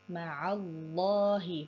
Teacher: Kemudian ma'allahi ini adalah lafaz Allah, lamnya dibaca tebal karena sebelumnya ini ada huruf berharokat fathah, yaitu huruf ain yang berharokat fathah.